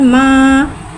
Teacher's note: खड़ा ज़बर को एक अलिफ यानी 2 हरकत के बराबर खींच के पढ़ेंगे और खड़ा ज़बर को मुँह खोल के अदा करके पढ़ेंगे। मीम खड़ा ज़बर माँ।